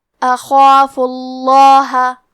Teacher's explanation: آخری میں کیونکہ فا پہ پیش ہے تو لفظ الجلالہ کے لام کا حکم ہے تفخیم، تو ہم حرف اللام کو موٹی آواز میں پڑھیں گے